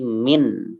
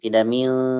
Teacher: Bunyi nun jika jelas berarti min, tidak mil